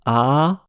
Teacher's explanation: la bouche est grande ouverte, donc c'est logiquement une voyelle basse ou ouverte.